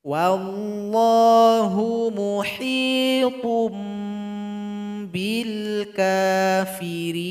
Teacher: muhitun menjadi muhitum. Ada iklab di sini dan didengungkan.